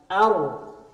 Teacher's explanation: di dalam huruf ro itu ada takrir, getaran